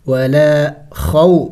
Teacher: ولا خو جل پڑھیں گے، وہ ساکن سے پہلے زبر ہے، حروف لین ہے